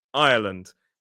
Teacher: we use that sort of the diphthong I and a schwa, or even a triphthong. Some dictionaries may argue Ireland.